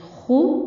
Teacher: खा सीधा पेश खु, दोनों होंठ आपके गोल होने चाहिए